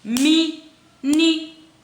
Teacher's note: A sílaba tônica, mínimo, é o mi.